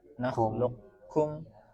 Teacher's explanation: Nah, tapi kalau Makki Abu Bakar bin Mihran itu pakainya menyisakan sifat isti'la. Qaf memiliki sifat isti'la.